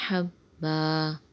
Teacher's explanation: یہاں دو زبر ہے لیکن آگے وقف آ رہا ہے تو یہاں پہ دو زبر کو الف سے پڑھ لیں گے اور وقف بنے گا وقف بالابدال، اور وقف میں پڑھیں گے حبا۔